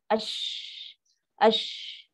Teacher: Ya tengah lidah. Tapi shin ni ada sifat tafashi. Angin yang lepas.